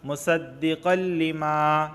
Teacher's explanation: تنوین کے بعد لام آیا ہے اور لام حروف یرملون میں سے ہے، تو یہاں پر صرف ادغام ہوگا، غنہ نہیں ہوگا